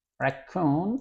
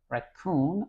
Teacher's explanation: the stress is on the second part of this word